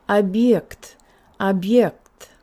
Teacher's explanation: The ye would be influencing the b. Our tongue would go to a really high and forward position, and there would be a slight buzz sound in the b. It would be объект, объект. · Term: palatalization